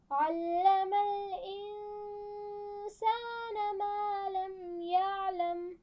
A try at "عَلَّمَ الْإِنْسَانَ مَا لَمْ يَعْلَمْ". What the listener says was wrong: شاباش.